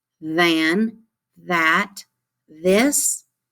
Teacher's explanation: these digraph th words than that this you can feel that vibration in your throat